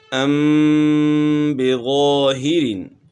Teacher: یہاں میم ساکن کے بعد با ہے تو اس لیے اس میں جو ہے نا غنہ کریں گے